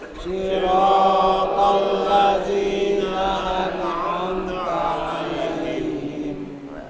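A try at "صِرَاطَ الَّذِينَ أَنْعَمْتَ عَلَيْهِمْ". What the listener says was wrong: Jangan seolah-olah bacaan diseret ya, an'amta. Terkesan nunnya menjadi pantulan. An'amta, an'amta. Itu lafaz atau cara membacanya yang benar. Siratal ladzina an'amta 'alaihim.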